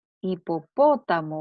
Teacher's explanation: la sílaba tónica está en la antepenúltima sílaba. Y como es una esdrújula, entonces está tildada.